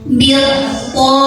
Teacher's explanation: alif lam ini tidak dibaca ya, lewat saja. Masukkan dari bi ke ta. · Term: alif lam syamsiah